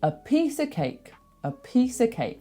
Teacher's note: This helps with that because if you know that the schwa sound is unstressed, it helps you know where to put your stresses because you know I don't need to put it on awah sound. So, in a piece of cake, we know that we are not going to stress a or of. We're going to stress the other two.